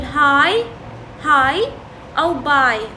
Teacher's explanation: The movement in this diphthong is from low towards high front.